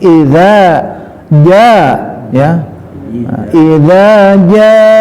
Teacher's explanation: ja-nya panjang ya, kasih cukup dengan 4 ya, itu 4 lah ya, cukup, jangan terlalu panjang, cukup ya.